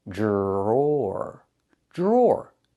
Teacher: The dr makes a J sound like in juice and jump. Plus the R. J. Then we have the or sound like more in door.